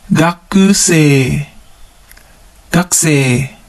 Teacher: Notice how we don't pronounce the U in the ku syllable. It becomes gakusei.